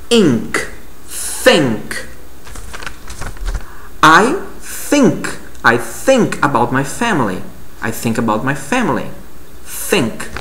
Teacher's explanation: Existe o TH sem voz, certo? Como, por exemplo, na palavra think.